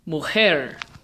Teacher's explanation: the emphasis really does fall on the last syllable